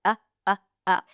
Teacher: I'm not releasing it through the nose. I'm just making an uh sound, but the tongue is up ready for the N. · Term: glottal stop